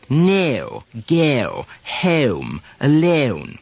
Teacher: in some very drawn-out upper class speech the forward glide is really accentuated